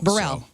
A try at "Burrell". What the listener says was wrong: you keep adding like a Burr. It's Burrell.